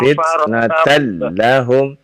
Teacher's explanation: Lam tasydid tapi tidak dibaca terlalu lama ya